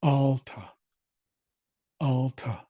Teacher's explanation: So A as in at in the first syllable, A as in father in the second syllable, and the accent goes on AL, which is the first syllable. So alta, alta, with a slight breath sound at the of the H at the end.